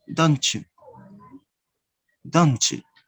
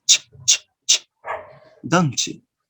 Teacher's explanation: So when you connect these two words together, you are going to join the sound ta plus the sound ya and produce the sound ch. And you say, don't you, don't you. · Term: reciprocal assimilation